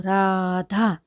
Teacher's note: થોડો કંપ હોય, થોડું ધ્રુજીને બોલે તો ર. એમનેમ તમે સીધી સાદી રીતે કંપન વગર, ધ્રુજારી વગર ર એમ બોલી નહીં શકો.